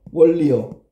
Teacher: 소리라는 위치는 잇몸 소리인데 문제는 소리라는 방법은 비음에서 유음으로 바뀌었지요. 얘도 똑같이 비음에서 유음으로 바뀐 좋은 방법이 달라졌다. · 그러면 얘는 그럼 소리나는 위치는 그대로 소리나는 위치는 잇몸 소리인데 문제는 소리나는 방법은 비음에서 유음으로 바뀌었죠 · 니은이 리을의 영향으로 리을로 바뀐 거야. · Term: 유음화